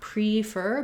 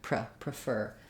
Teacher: will see either a schwa or an i in the dictionary what's important is that fur is long it has the clear ER and the pra is going to be short and have a reduced vowel · in prefer the letters p r e say pra they have the reduced schwa and we don't make a clear vowel here not pre-fer but